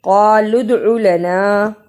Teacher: قا کو موٹا پڑھا، دال پہ قلقلہ کیا، او کو لمبا نہیں کرنا.